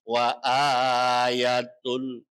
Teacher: Mad artinya panjang, badal artinya pengganti. Panjangnya satu alif atau dua harokat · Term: mad badal